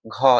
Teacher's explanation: घ बोलिए और आप हाथ रखिए, तो इसमें क्या है कि आपको वायु ज्यादा निकल रहा है , इसका मतलब आप ज्यादा प्रयत्न कर रहे हैं उस बात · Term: महाप्राण व्यंजन